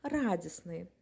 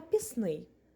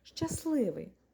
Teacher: вимовити це складно і незручно тому літера Т випадає і виходить слово радісний так само і словом піст на пісний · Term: спрощення